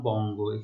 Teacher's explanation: যেমন বঙ্গ, এখানে দেখো যে উ এবং গ, তো উ হসন্ত গ, গ এর সাথে অ আছে, সেজন্য গ ওকার উচ্চারিত হচ্ছে। তো আমরা বলছি যে যুক্ত ব্যঞ্জনের অন্ত অটি বা শেষের অটি কি হচ্ছে, ওবত বা ও এর মতো উচ্চারিত হচ্ছে।